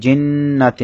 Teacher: নুনের মধ্যে তাসদিদ ওয়াজিব গুন্না তার মধ্যে টান নেই